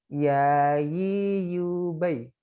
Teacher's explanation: Huruf ya dia rokhwah yang mengalir